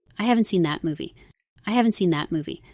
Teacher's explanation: So I'm emphasizing haven't by going higher and that by going longer.